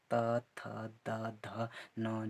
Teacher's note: त थ द ध न जो है ये हमारे पास कहाँ से बोले जाते हैं, दंत से बोले जाते हैं। जिनके जीवा के दंत में से टकराने से जो शब्द जो उत्पन्न होता है उन्हें हम दंत शब्द कहते हैं।